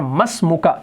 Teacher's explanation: یہ میم جو ہے یہ براہ راست اس سین سے ملے گا، تو یہ الف الوصل جو ہے، حمزۃ الوصل جسے کہا جاتا ہے، یہ لکھا جاتا ہے، پڑھا نہیں جاتا، تو یہ بن جاتا ہے مسموکا، تمہارا نام کیا ہے۔